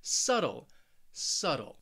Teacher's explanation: hear it subtle also remember I'm from the United States so that t I'm really saying a flap T which almost sounds like a very soft D sound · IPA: /ˈsʌtl/